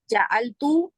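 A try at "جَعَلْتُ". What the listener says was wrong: खींचना नहीं है, तू नहीं करना। उंगली एक रखे, एक उंगली खड़ी करें बस। जाल तू जाल तू।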